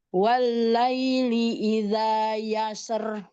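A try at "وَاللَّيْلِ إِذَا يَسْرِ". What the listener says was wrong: tidak terlalu yasr, tidak di tarkik, takrirnya tidak terlalu berlebih, Bun. Jadi yasr, yasr, tidak yasr.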